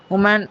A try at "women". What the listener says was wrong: Okay, for woman, the plural has to be pronounced women. women. It's not Women's Day, it's Women's Day. Woman becomes women. Women.